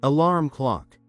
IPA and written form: əˈlɑrm klɑk (Alarm clock)